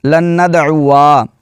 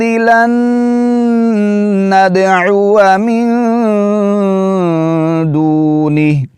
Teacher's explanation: تو اس کو بہت سارے احباب اس کو پڑھ جاتے ہیں لن ندعوا جو کہ بالکل غلط ہے. یہاں پر الف کو بالکل نہیں کھینچنا, الف نہیں پڑھنا آپ نے.